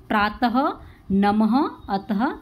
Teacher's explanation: विसर्ग उसी को बोलते हैं, जैसे प्रातः, नमः, अतः, इसको ह के रूप में बोला जाता है। विसर्ग को ह के रूप में बोला जाता है। जब साउंड होता है तो ह निकलेगा, प्रातः, नमः, अतः।